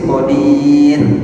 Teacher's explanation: ro sukun sebelumnya sukun sebelumnya kasrah dia dibaca tipis · Berbeda dengan yang ayat pertama, ra sukun, sebelumnya kasr, dia dibaca tipis, qadir. Kalau dia sebelumnya sukun, sebelumnya dhammah, atau sebelumnya sukun, sebelumnya fathah, dibaca tebal.